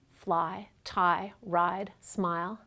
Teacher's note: The first part of the sound is the low front [a] but then the tongue moves up quickly at the end of the sound ending in [ɪ] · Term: diphthong